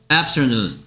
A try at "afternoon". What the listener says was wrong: F 소리가 있는데 P가 거기 왜 들어갑니까?